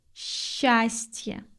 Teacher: We pronounce s-ch like sh.